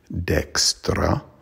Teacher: a d would be pronounced like an n so it'd be and then the r is trilled